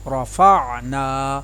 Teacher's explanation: را کو میں نے پر ادا کیا اور نون کے ساتھ الف مدہ کو ادا کیا